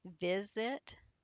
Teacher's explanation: So we have here visit. The stress here is on the vi on the first syllable.